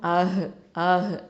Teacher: இந்த ஹ சுக்குன் வந்து எங்கேருந்து வரணும்? அக்கசல் ஹல்க்கு கீழ்த்தொண்டை